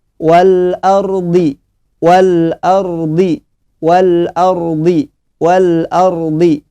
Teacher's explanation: Ro di sini tebal, ya, tafkhim